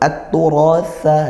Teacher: jadi sa ya, bukan sin, bukan shin atau yang lain, namun sa dari ujung lidah ke ujung gigi di atas